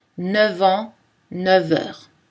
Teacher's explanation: on prononce V quand le chiffre 9 précède les mots an et heure uniquement.